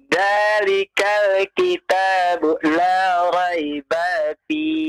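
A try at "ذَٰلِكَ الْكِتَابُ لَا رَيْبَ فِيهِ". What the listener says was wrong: Nah, ini baknya nih yang panjang nih. Jangan dipanjangkan ya.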